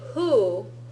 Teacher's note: when you say who your mouth is a little bit more open and your teeth are further back they're not coming close to your lip